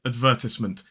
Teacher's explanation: But technically, in a modern British RP accent, this word is advertisement. 4 syllables, stress on the second